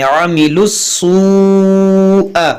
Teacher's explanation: یہاں پر دیکھیں عاملس اس واو کو ان دونوں الف کو اس لام کو نہیں پڑھیں گے، اس لام کو اس سین سے ملائیں گے